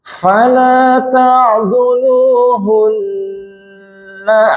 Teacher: Kalau berhenti pada huruf nun yang bertasydid tetap panjenengan mendengung wajibul gunnah.